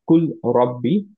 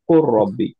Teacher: যেমন হচ্ছে কুল রব্বি, এটা আমরা পড়ি হচ্ছে কোর রব্বি, লামটা বাদ চলে যায়, আমরা লামের সাথে রটা মার্জ হয়ে গেল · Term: ফুল মার্জ